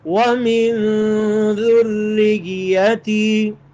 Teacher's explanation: را پر زور لگا کے، یا پر زور لگا کے، دونوں پر شد ہے